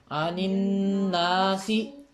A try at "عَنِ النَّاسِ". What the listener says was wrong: ناسی، آدھی آواز ہے، زیر کی آواز ہے، آپ کے پیش ہے کتاب میں؟ چاہیے غلط لکھی گئی ہے پھر، عن الناسی،